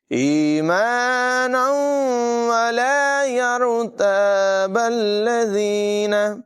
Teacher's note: تنوین کے بعد واو حرف معلوم میں سے ہے، ادغام ہوگا، غنہ کر کے پڑھیں گے